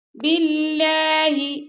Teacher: اللہ کے لام سے پہلے آ گیا با کے نیچے زیر، تو اس یہاں پہ اللہ کے لام کو باریک پڑھیں گے